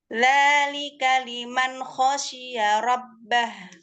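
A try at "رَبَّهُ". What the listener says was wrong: Bukan rob, robbah. Masih roknya masih tipis. Coba ro, robbah. Bibirnya jangan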